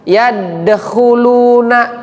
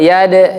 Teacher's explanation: Di ayat kedua yad itu qalqalah, maka mantul dia. Yadkhulu bukan yadkhuluna, salah.